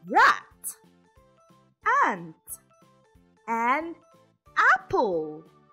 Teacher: the short a is pronounced ah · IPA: /a/